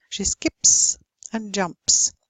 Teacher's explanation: The P is unvoiced, therefore unvoiced, ending S.